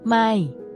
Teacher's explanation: Is pronounced with a falling tone, which starts at a high pitch and then drops down.